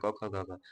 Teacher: कंठ से बोला जाएगा